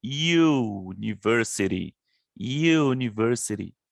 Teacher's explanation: percebam que o U aqui, apesar de ser uma vogal, o som dela é de uma consoante, que é o mesmo do U, que inicia com Y.